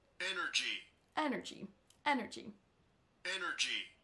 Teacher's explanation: Energy, ce sera sur la première syllabe.